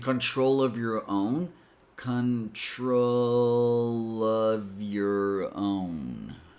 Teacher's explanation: bring the consonant to the next word so that the consonant and the vowel sound of the next word are together